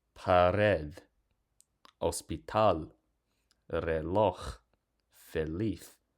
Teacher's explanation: Pared, hospital, reloj, feliz. So notice in all of these words, because they end with a consonant that's not S or N, the stress automatically falls on the last syllable.